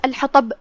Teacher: کلمت الحطب میں طا حروف التفخیم میں سے ہے، ہم طا کو موٹی آواز میں پڑھیں گے